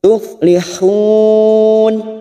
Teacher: Mat arid li sukun 4 harokat kita panjangkan